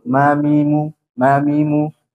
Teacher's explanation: Jadi merapatnya bibir atas dan bibir bawah kalau mim disertai dengan gunnah.